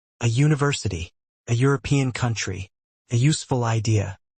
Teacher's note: Although these words begin with vowels in writing, they begin with the consonant sound U in speech.